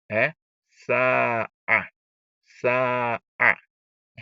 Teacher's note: you are going to elongate the sin because of the alif that is in front of it. So you just elongate it twice.